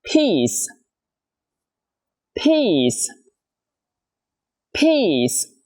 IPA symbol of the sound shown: pi:s